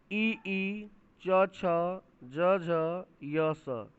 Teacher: तालु और जीव से, इसको कहेंगे तालव्य